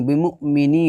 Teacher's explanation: حمزہ ساکنہ کے پڑھنے میں کیا ہوتا ہے، جھٹکا بھی ہوتا ہے ، تو جھٹکا پڑھ دیں گے، با زیر بی میم حمزہ